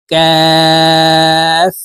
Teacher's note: কাফের উচ্চারণ জিহ্বার গোড়া থেকে একটু আগে বাড়াইয়া পড়তে হবে